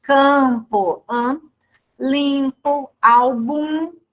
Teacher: Aí vai, né, se a escrita é com M ou com N, vai de acordo com a ortografia, né? Então, quando M e N não são pronunciados, somente nasalizam a vogal que precede, que vem antes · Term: dígrafos vocálicos ou nasais